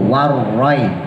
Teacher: ro-nya tebal karena harokat fathah, tafkhim, monyong, mencucu